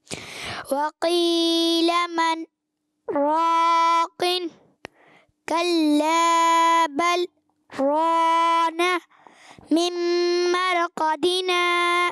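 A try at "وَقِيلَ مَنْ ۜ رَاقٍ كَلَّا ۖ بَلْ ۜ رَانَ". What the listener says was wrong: را کو پر کرنا ہے.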